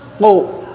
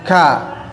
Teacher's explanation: Qaf sama ka secara makhraj ya tempatnya adalah pangkal lidah ya, dekat tenggorokan. Tetapi huruf kaf agak turun ke bawah ya, agak turun ke bawah karena dia istifal. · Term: huruf yang terangkat